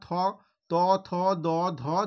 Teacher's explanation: দন্তের মূলে অর্থাৎ দাঁতের গোড়াতে গিয়ে স্পর্শ করে উচ্চারণ হচ্ছে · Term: দন্তমূলীয় বর্ণ